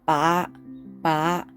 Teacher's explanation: it's a low Rising tone